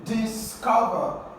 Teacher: For this word, the second syllable is stressed.